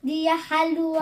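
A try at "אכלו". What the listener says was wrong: Non, pas Halou. Akhalou, ça c'est un khaf. Akhalou. Non, Akhalou.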